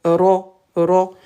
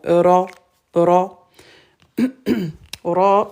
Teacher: Ra, on roule le bout de la langue. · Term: R roulé